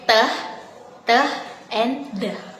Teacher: Alveolar produced with the tongue against the alveolar right.